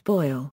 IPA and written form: ˈbɔɪ̯l (boil)